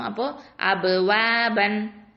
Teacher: இந்த பேல வந்து சுக்கூன் இருக்கிறதுனால இது கல்கலா கொடுக்கணும்.